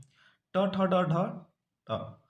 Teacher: ट, ठ, ड, ढ, ट, ये जो बोलते जाते हैं इसको हम मूर्धन्य से बोलते हैं